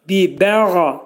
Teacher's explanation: Qayn hərfi boğazın ortasından çıxarılır.